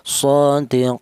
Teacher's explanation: boleh dibaca tawas artinya sedang yaitu dua alif atau empat harakat atau empat ketukan